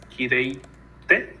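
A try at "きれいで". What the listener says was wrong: De, no es T, sino siempre con de. De, ¿ves?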